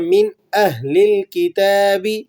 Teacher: یہاں پر نون ساکن ہے لیکن یہاں غنہ نہیں ہوگا بلکہ یہاں اظہار ہوگا